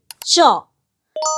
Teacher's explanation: দেখো জিভের ঠিক মাঝখানটা তালুটাকে স্পর্শ করলো, ঘষটে দিয়ে বেরিয়ে গেল। তাহলে শ্বাসবায়ুটা ওখানে কিছুক্ষণের জন্য আটকেছে, তারপর জিভটা ওকে তাড়িয়ে নিয়ে বেরিয়ে গেছে। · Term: ঘৃষ্ট ধ্বনি